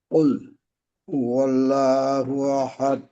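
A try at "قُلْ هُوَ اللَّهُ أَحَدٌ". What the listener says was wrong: আচ্ছা, এখানে কুল বলে থেমে থাকা যাবে না, লামের আওয়াজটাকে একটু ধরে রাখতে হবে।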